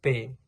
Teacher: P itu tidak bersuara tidak ada getaran pita suara